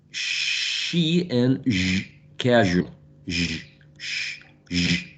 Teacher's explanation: the front part of the tongue, not the tip, the front part of the tongue, and is raised against the roof of the mouth, but not exactly in the alveolar ridge, and not exactly in the hard palate. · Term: post-alveolar fricative sounds